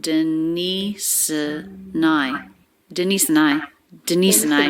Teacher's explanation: s sound links into the schwa denise and i and then the n sound links right into the i diphthong